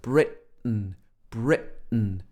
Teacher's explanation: word not everybody will say britain some people say britain britain again with a glottal stop your glottis in your throat closing up